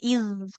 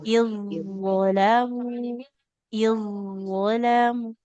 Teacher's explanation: Zo-nya ditebalkan, Ibu. Jangan iz. Kalau iz nanti masuknya ke zal sukun. Tipis.